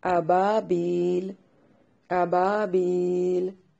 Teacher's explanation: اسی طرح اس آیت کو لاسٹ پہ دیکھیے ابابیل، ایک الف کی مقدار کے برابر مد کر سکتے ہیں.